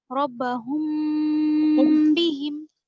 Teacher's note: इख्फा का मतलब है छुपाकर पढ़ना, मीम की मतलब आवाज को नाक में ले जाकर पढ़ना, नाक में छुपाकर पढ़ना